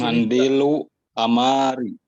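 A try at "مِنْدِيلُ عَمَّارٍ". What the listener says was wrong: ini ya, ini jangan dibaca fathah. Ini kasroh. Ini aslinya iya, ini kan aslinya ini nama Arab. Ammarun. Iya, mindilu ammarin.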